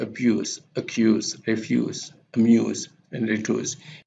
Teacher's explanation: the vowel is produced with a tense jaw muscles and also tongue muscles. So when we produce this vowel, our tongue and jaw muscles are tense.